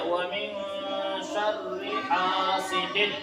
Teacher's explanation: الف مدہ. تو اس کو ایک الف کے برابر کھینچ کر پڑھیں گے